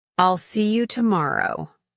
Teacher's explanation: It's used to show that the speaker is confident in their statement, "I'll see you tomorrow." The falling intonation here suggests certainty.